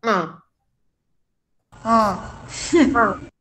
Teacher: como si tuviéramos gripa, la nariz tapada. O sea, mandamos el sonido hacia la nariz. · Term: vocales nasales